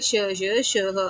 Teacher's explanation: ऊष्म में है हमारे श श श आते हैं जिनमें गर्म हवा निकलती है